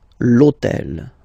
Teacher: this hôtel, okay, because it starts with H, but remember that in French we don't pronounce H, okay, so basically the first sound of the word is the vowel O , okay, so for the same reason, E needs to disappear,